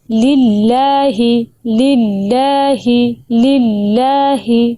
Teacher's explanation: Number 1، للہ کو للہ پڑھنا، لفظ اللہ کی لام کو پور پڑھنا غلط ہے۔ لفظ اللہ سے پہلے زیر ہے، لام کو بریک ادا کیجئے